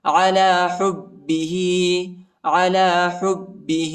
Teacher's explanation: ہا کو با کے ساتھ ملائیں گے، با کو شدت کے ساتھ سختی کے ساتھ پڑھیں گے، اور ہا پر کڑی زیر آیا ہے، اس کو ایک الف کی مقدار تک کھینچیں گے